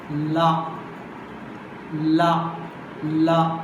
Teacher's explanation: This is a closure. Okay, this is a closure at a point in the middle of the mouth, and the air escapes to the sides. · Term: lateral